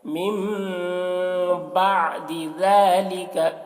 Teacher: جب نون ساکن کے بعد با آئے تو نون کو میم سے بدل کر غنہ اور اخفا کے ساتھ پڑھتے ہیں، اس کو اقلاب کہتے ہیں۔